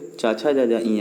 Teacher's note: आपको जीभ जो आपका है वो तालू पे लगता होगा, तब च छ ज झ इया निकलता होगा।